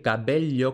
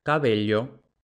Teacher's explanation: tenemos la fricativa de la B entre dos vocales y pasamos de decir cabello con esta B fuerte a Ahora sí cabello